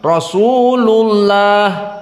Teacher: Untuk contoh misalnya lafdzul jalalah Allah, dia setelah datang dari dhammah maka dia mufakhamah. Contohnya Rasulullah, setelah dhammah lullah.